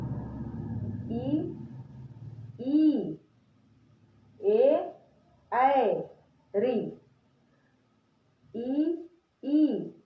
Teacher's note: 5 स्वरों का उच्चारण हमारा आगे वाले, जीभ के आगे वाले भाग से होता है। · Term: अग्र स्वर